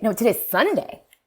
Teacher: characterized by a fall and then kind of a dramatic rise in pitch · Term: pitch accent